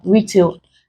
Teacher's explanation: Retail, we stress the first syllable